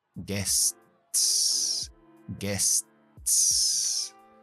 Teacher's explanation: Cuando hacemos S, T, S, la S y la T son alveolares. La lengua está en la misma posición para los dos. Simplemente que subimos, pegamos para la T, despegamos y ya estamos en S.